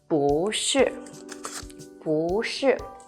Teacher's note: But the good thing is the tone changing rules is the same as 一, which is when followed by the fourth falling tone, 不 becomes the second rising tone